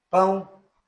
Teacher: Então, por exemplo, pão é nasal, por causa do que o som ele sai pelas fossas nasais, parte do som. Pão, o A é mais forte, então decrescente. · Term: ditongos nasais decrescentes